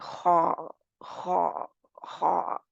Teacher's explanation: निकलता है अदना हल्क से